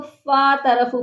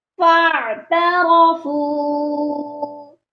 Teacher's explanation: فَاعْتَرَفُوا بِذَنبِهِمْ، یہاں پر اکثر لوگ فا طرفو پڑھتے ہیں، فا کے ساتھ الف کو لمبا کر کے پڑھتے ہیں، یہاں پر ہم نے الف کو چھوڑ دینا ہے، عین ساکن کے ساتھ فا کو ہم نے ملا کر پڑھنا ہے، یہ کھینچ کر نہیں پڑھا جائے گا، یہ پڑھا جائے گا فَاعْتَرَفُوا، اور فو کو کھینچنا ہے کیونکہ اس کے ساتھ بھی واو مدہ ہے۔